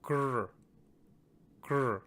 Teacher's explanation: The next is the retroflex vowel r. So to get the kr sound, we take that little C shape and place that beneath the letter ka, like such, and you get kr.